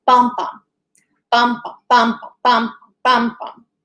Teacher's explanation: A foot is a trochee, and that is a stressed syllable followed by an unstressed syllable.